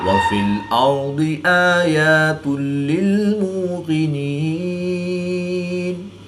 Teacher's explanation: یہاں پر ادغام بلا غنہ ہوگا یعنی غنہ نہیں کریں گے